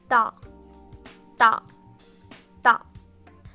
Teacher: Now this sound again has no equivalent in English. It has a lot of pressure and is spoken with the least amount of air of the trio. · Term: double consonant